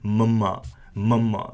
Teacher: mama mama because that an m or a mama essentially is a nasal consonant which originates from your lips so the letter we have here is a mama and very